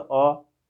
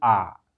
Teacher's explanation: ह्रस्व स्वर को बोलते हैं तो अ, और दीर्घ स्वर को बोलते हैं तो क्या बोलते हैं आ, समय ज्यादा लगा। अब फिर कहने का ह्रस्व से दुगुना टाइम लगा, डबल मतलब दुगुना टाइम लगा।